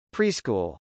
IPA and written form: priskˈul (preschool)